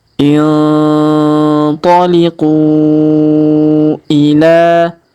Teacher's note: Kemudian huruf ku kita panjangkan 5 harokat karena di atasnya terdapat tanda bacaan panjang 5 harokat.